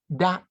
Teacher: sound between the A in apple and in calm